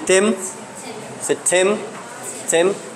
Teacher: some would pronounce the letter T there as aspirated